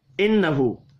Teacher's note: نون مشدد پر غنہ کریں گے، الٹا پیش کو 1 الف کے برابر کھینچ کر پڑھنا ہے۔